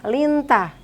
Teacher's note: lintah itu adalah hukum bacaan ikhfa haqiqi dibaca samar-samar dan bedengung